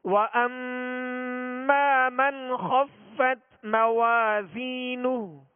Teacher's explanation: من کا نون ساکن ہے، نون ساکن کے بعد خا ہے، قاعدہ کون سا ہے جی؟ اظہار. یہاں غنہ کریں گے؟ نہیں کریں گے.